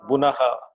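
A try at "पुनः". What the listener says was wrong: It is Pu, not Bu. Pu. First letter of the cover.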